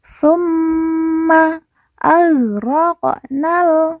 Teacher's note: mim yang bertasdid langsung kita tekan kita tahan dua harakat dan didengungkan